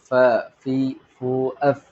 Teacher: നാവിൻ മുൻപല്ലിന്റെ തല തലഭാഗം താഴെ ചുണ്ടിന്റെ പള്ളമ തട്ടിയിട്ടാണ് ഉച്ചരിക്കേണ്ടത്